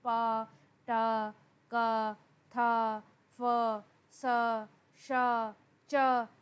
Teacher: ये voiceless sounds होती हैं, इनमें ज़्यादा आपको मेहनत नहीं करनी पड़ती। इनके अंदर आप महसूस भी करेंगे कि आपका ग्लॉटस जो है वो फुल तरीके से खुला हुआ है, और ऐसा लगता है कि वोकल कॉर्ड्स जो हैं वो एक दूसरे से बहुत ज़्यादा दूर हैं।